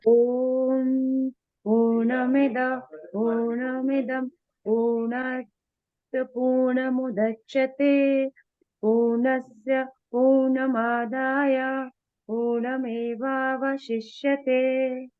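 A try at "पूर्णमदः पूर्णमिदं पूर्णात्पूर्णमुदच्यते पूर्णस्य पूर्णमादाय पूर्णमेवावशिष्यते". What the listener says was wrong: पूर्णम है वैसे, not पूनम, but ऐसा लगता है कि पूनम बोल रहे हैं.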